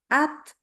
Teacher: Jadi keluar udara at. Jadi lepasnya itu udara itu adalah karena kita melepaskan lidahnya dari bagian pangkal giginya. Kita lepaskan maka keluar udara. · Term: hames